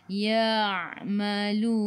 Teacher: Ma'rif li sukun boleh baca 2, 4 atau 6 harakat. Matikan dengan huruf nun. Hujung lidah menyentuh gusi atas.